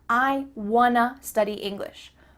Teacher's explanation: Or you might say, "I want to study English." Here we're changing want to to wanna. Again, the word to changes to a